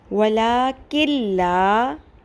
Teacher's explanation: لکھنے میں وَلَٰكِن آئے گا، ٹھیک ہے، لیکن پڑھنے میں آگے لام کے ساتھ جوڑ کے نون ختم ہو جائے گا. وَلَٰكِن لَا، کن لا بھی نہیں پڑھنا، ٹھیک ہے، نون کو بالکل آپ نے بیچ میں سے ہٹانا ہے پڑھتے ہوئے. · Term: نون ساکن